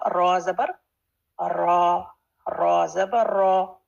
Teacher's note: जब रॉ पर जबर आए तो रॉ हैवी होगा